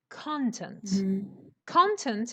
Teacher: when this word is a noun, then the stress changes. It goes to the beginning and it becomes content.